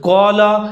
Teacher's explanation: قاف اور الف دونوں موٹے پڑھے جائیں گے، الف قاف کی وجہ سے موٹا پڑھا جائے گا۔